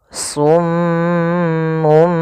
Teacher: ada bacaan ghunah pada huruf mim yang berharakat tasydid